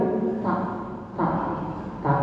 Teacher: di ujung lidah menyentuh pangkal gigi seri atas itu tak